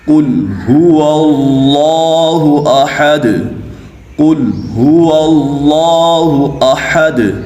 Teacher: قاف یہ حروف مستعلیہ میں سے ہے تو اسی وجہ سے قاف کو پر پڑھیں گے۔